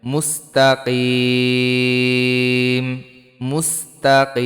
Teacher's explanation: থামলে এখানে তিন আলিফ টান হবে